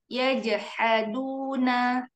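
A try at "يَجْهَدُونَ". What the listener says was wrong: Iya, ya jahadu, jangan he, tapi ha. Ya jahaduna.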